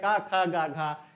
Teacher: का वर्ग का उच्चारण स्थान कंठ से होता है